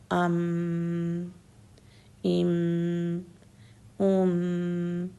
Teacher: سکون سے دونوں ہونٹ بند ہو جائیں گے اور نوز میں ساؤنڈ جائے گی